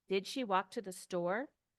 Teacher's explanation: And remember, it's a yes-no question. The answer is yes-no, so the intonation goes up.